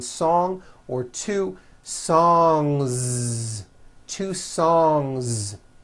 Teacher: song ends with a voiced ng sound so if you make it plural don't forget to add a voiced Z ending